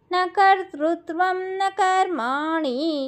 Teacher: కర్మాణిలో అనాది నాలుకని పైనంగడికి తగిలిస్తే అనా పడుతుంది